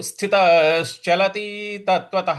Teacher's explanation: और उसके बाद ल, उसके बाद त पर छोटी की मात्रा है तो स्थितर, स्थितश्चलति, स्थित, स्थितश्चलति, स्थितश्चलति, इस प्रकार से बोलेंगे तो ये हो जाएगा स्थितश्चलति तत्वतः, स्थितश्चलति तत्वतः। देखिए, जो अंत में त है उसके आगे विसर्ग है, और विसर्ग के आगे कुछ नहीं है, तो जो विसर्ग है उसका उच्चारण जो है ह होगा